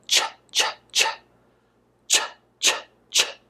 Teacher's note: is voiceless which means we do not use our voice box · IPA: tʃ